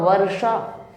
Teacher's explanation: ये मूर्धन्य श है, इसका उच्चारण मूर्धा से होता है। ये व्याकरण के अनुसार, हिंदी व्याकरण न्याय के अनुसार ऊष्म वर्ण कहते हैं इसे हम।